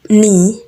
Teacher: Word initial velars stop K and G are no longer pronounced before nasals N.